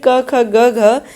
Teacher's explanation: तो का वर्ग जो है इसमें क, ख, ग, घ, इसका जो उच्चारण स्थान है वो कंठ के स्पर्श से होता है